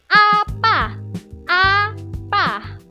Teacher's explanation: Nah, kita akan ke huruf ke bunyi berikutnya yaitu A. Nah, A ini dia posisi lidahnya itu rendah. bawah bagiannya itu depan dengan posisi mulut terbuka.